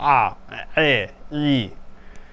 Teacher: pharyngealized, which is made with your kind of like squeezing your throat. The pharynx is the throat.